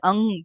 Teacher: अनुस्वार का उच्चारण भी नाक से होता है अनुस्वार यानी कि जैसे अंग बोल रहे हैं हम है ना